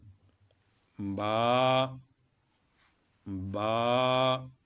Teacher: دونوں ہونٹوں کی تری سے